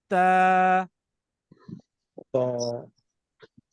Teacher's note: अब जो 3 आ रहे हैं उसके अंदर आपकी जबान की नोक ऊपर वाले दांतों के बैक साइड पीछे लगेगी